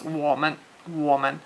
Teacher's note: mun doesn't really have a tone. It's what they call the fifth tone, I guess you could call it, and it's just kind of a staccato.